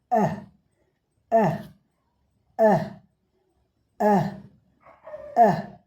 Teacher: Front near close अनराउंडेड short vowel. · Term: छोटा इ